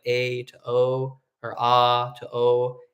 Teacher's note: go from a bright to a dark vowel so like a to o or a to O and we're rounding our lips